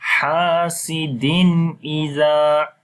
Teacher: After the tanween there is hamza. Again we make izhar as we say hasidin iza.